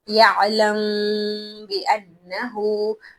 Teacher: मीम को हल्का सा छुपाकर नाक से आवाज निकाली जाती है। जिसे हम गुनगुनाना कहते हैं या गुनाह कहते हैं। · جب میم ساکن کے بعد حرف با آ جائے تو میم کو ہلکا سا چھپا کر ناک سے آواز نکالی جاتی ہے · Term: इफा, اخفا